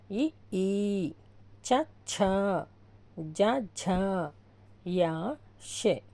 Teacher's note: తాలవ్యములు అంటే దవడల నుండి పుట్టినవి